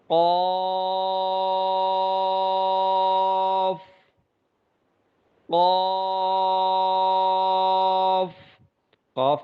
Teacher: ہونٹوں کو بہت زیادہ گول کیا جاتا ہے، جس سے قاف کی اپنی اصل آواز ختم ہو جاتی ہے، تو پھر یہ یوں بن جاتا ہے قوف۔